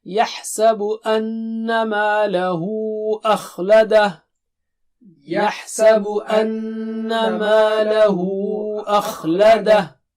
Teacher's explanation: when you stop at hu, you will stop with just ha, with sakin, with sukun.